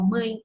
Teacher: Você pega a palavra mãe, ó, mãe, você escreve mãe, mas a nasal, ela acaba transformando, né, esse E em I.